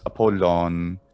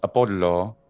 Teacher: Latin does Apollo, but Greek does Apollon. And that final N sound is retained in Greek, but removed in Latin